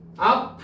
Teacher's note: 마지막 피읍은 비읍으로 바뀌어요.